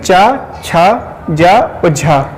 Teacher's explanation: ये क्या है कि स्पर्श संघर्षी व्यंजन वर्ण हैं